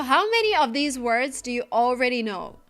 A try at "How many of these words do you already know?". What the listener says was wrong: Of? We cannot pronounce the word this way. It's pronounced of. Use the closed short sound. Like cup and up. Of. Plus the V sound. V. Of. Not off, but of.